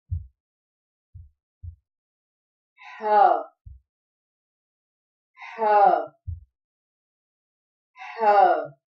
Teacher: حلق کے آخری حصے سے جو سینے کی طرف ہے ح ادا ہوتا ہے